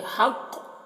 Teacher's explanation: قاف میں قلقلہ کریں گے وقف کی صورت میں